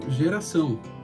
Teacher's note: O C, cedilha, ele adquire a sonoridade de S, né, quando tem a cedilha. O ditongo no final, o ão, né, ele é um ditongo decrescente, né, ao, né, só que nasalado, ão.